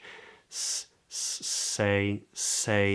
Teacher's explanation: I'm going to leave the S for now, but it's made with the tongue, sort of blade of the tongue rising into the front of the mouth, approximating with the gum ridge. Say, say.